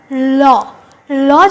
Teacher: দেখো ল ল যখনই আমরা বলছি আমাদের জীবটা আমাদের তালুতে গিয়ে আমাদের জীবের ডগাটা তালুতে গিয়ে ঠেকছে এবং আমাদের জীবের যে দুটো পাস রয়েছে দুটো পাস একেবারে ফাঁকা হয়ে ওখান থেকে হাওয়া বের হচ্ছে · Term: পার্সিক বর্ণ